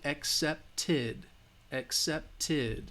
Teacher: if it's a T sound, then the ed, accepted, accepted, will have that id sound